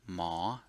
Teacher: But on the left, because hall heap conducts the tone, and hall heap is a high class consonant, then by nature, since it's a long vowel and more importantly, since it's a since it's open, it's a rising tone